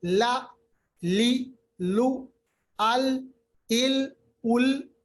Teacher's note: लाम अदा होता है जब जबान का किनारा मिलता है